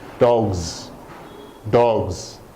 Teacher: the G is a voiced consonant at the end is stronger and you can hear the G sound so the S becomes a z